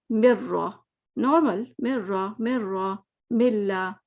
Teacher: بلا کا مطلب یہ ہے نا کہ غنہ نہیں کرنا اور 2 حرکت بھی نہیں کرنی ہے، 1 حرکت کرنی ہوتی ہے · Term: بلا غنہ